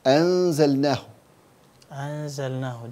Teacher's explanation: This is the complete ghunnah. Yeah. Because it's in ikhfa.